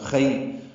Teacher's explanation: خی یائلین ہے، یہ نرمی سے پڑھیں گے، اس کو خیر نہیں پڑھنا، خی۔